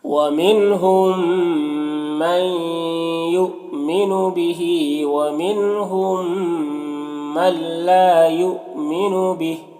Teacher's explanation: یہاں پر حمزہ ساکنہ ہے واو کی شکل میں جھٹکا لگے گا · یہاں پر نون ساکن کے بعد لام حروف یرملون میں سے تو یہاں پر ادغام تام ہوگا